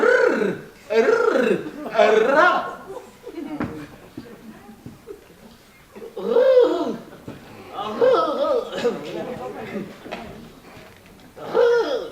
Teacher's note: Hein, de sorte qu'étant frôlée par l'air qui sort avec force, la langue lui cède, mais revient toujours au même endroit, faisant une manière de tremblement, comme ça, un rrr, rrr, un ra. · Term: le R